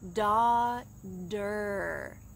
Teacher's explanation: notice the t changes to d in american english